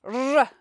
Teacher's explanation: when a Scottish person says the letter R, we really hear it and it stands out in the word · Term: Scottish R